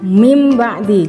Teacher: Ingat ya, huruf iqlab hanya satu saja yaitu ba. Maka nun mati atau tanwin itu harus dibaca mim, disertai dengan dengung